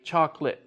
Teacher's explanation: we don't use all of the syllables with chocolate